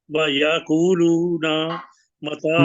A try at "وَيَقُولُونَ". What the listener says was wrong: کچھ چھوٹا رکھے نا،